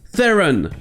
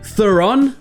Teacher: certains le prononcent Theron avec la première syllabe accentuée, et d'autres le prononcent Theron avec la deuxième syllabe accentuée.